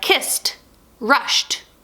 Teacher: I hear the T sound which means that last sound there should be an unvoiced sound